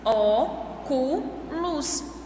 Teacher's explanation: Óculos, a sílaba tônica é o O. Então, depois do O, tem mais duas sílabas.